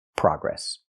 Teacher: In America, we use the open a sound like hot and stop.